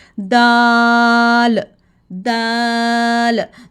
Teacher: तो हम जो है दाल में ज़ुबान की नोक को ऊपर दांतों की जड़ के साथ जो लाइन लगी होती है वहाँ से लगाएंगे। टिप ऑफ द टंग से अदा करेंगे दाल दाल।